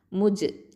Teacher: முஜ், இந்த ஜீமில் வந்து என்ன, இது ஜஹரு சிஃபத் இருக்குது, கல்கலா இருக்குது. அப்போது நம்ம கல்கலத்து சுகுரா லைட்டாக அசைச்சு ஓதணும்